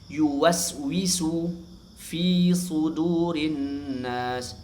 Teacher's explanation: Fi juga dibaca panjang dua harakat ya karena ya didahului kasrah setelahnya bukan hamzah atau sukun asli.